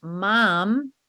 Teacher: a word like Mom is easy to read because it has what we call a bilabial both lips